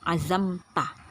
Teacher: izhar artinya jelas jadi harus diperjelas Itu bunyi mim matinya azamta benar-benar kita menutup mulut kita pada saat menyebut menyebutkan bunyi mim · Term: izhar syafawi